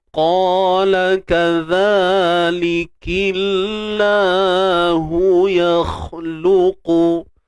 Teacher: Kalimah Allah nipis dan dia mak asli 2 harakat.